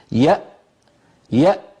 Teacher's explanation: نقول يأتون مثلا، يأ، فنجد بأن الوترين الصوتيين ينقفلان تماما ولا يبقى مجال لمرور ذرة من الصوت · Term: الهمزة الساكنة